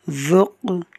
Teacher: قاف حروف قلقلہ میں سے ہے، ساکن ہے، خوب قلقلہ کریں گے۔